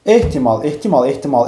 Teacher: Ehtimalda vurğu sonuncu hecadadır. Amma uzanma burda özünü göstərmir.